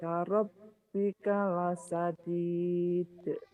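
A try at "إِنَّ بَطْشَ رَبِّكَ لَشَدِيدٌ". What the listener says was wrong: Inna batsha rabbika lasadid. Ibu tinggal dilatih shinnya aja ya. La gitu Bu. La syadid. Tapi shinnya nggak tahu kenapa itu. Shinnya susah.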